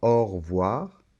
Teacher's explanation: la lettre e de re voir cette lettre e quand on parle un peu comme ça rapidement au revoir on ne l'entend pas